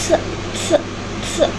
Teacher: bunyi S diproduksi dengan aliran udara lebih kuat dari rongga mulut sehingga menghasilkan bunyi aspirasi atau bunyi yang disertai dengan udara